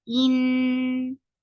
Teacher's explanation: In Hamza is very sharp, attached with noon. Noon will get the sifa of akmal kunna. So keep the sound in your nose for a longer time. In, and fatha is very short.